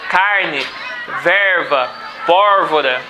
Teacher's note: o R retroflexo vai ser bem típico da cultura caipira